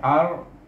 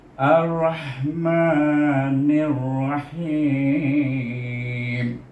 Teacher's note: Serupa juga tadi, tapi sini Rahmanir-Rahim, di sini ar, iaitu alif dibariskan di atas, dibaca dengan idgham syamsi dengan huruf ra, iaitu kita baca ar.